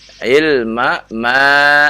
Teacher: Nah, ada 2. Ma yang pertama pendek, yang kedua ya, ma tabi'i panjang.